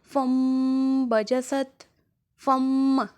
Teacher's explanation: تو عزیزان گرامی، اگر نون ساکن یعنی وہ نون جس کے اوپر جزم ہوتی ہے حالت سکون میں ہو، اور یا تنوین یعنی دو زبر دو زیر دو پیش کے بعد اگر با آ جائے، حرف اقلاب فقط با ہے، اگر با آ جائے تو ہم نون ساکن اور تنوین کو میم میں تبدیل کر دیں گے